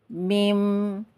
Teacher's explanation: mengalir nafasnya mim itu ya Jadi yang kedua mempunyai sifat bainiah sifat bainiah adalah suaranya separuh mengalir separuhnya tertahan